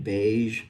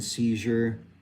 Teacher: if you hum while saying shh, shh, that turns into that like weird ZH or G sound